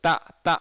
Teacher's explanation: தா சொல்லும்போது நாக்கு வந்து முற்பற்களில் படும், இப்படி டச் பண்ணி சொல்லுவோம்